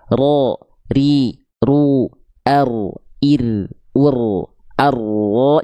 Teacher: Ro itu dia bergetar, tapi bukan dengan karakter getaran yang berlebihan. Ada getarannya, tapi bukan getaran sebagaimana kita melafalkan huruf R. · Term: takrir